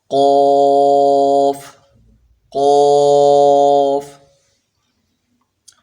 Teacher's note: کوے کے متصل زبان کی جڑ جب اوپر کے تالو سے ٹکر کھائے، بس اس کے قریب قریب ہی زبان کی جو جڑ ہے، زبان جہاں بالکل زبان شروع ہو رہی ہے وہ اوپر اس کے تالو سے ٹکر کھائے، اس سے قوف ادا ہوتا ہے